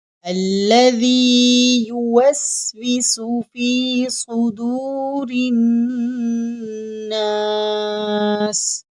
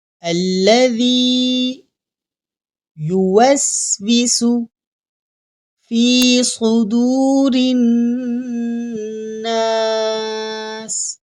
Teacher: اب یہاں ذال ہے، ذال کو پڑھنے کا طریقہ یہ ہے، ہماری زبان کی نوک سامنے والے دانتوں سے تھوڑی سی باہر رہے گی تو ذال ادا ہوگا، اور یہاں صاد حروف مستعلیہ میں سے ہے تو صاد کو ہم موٹا پڑھیں گے، اور یہاں را کے نیچے زیر ہے تو را کو ہم باریک پڑھیں گے۔